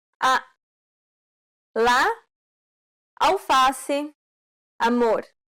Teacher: This vowel sound is very similar to the A in father. This vowel sound is considered an open A sound because the jaw is low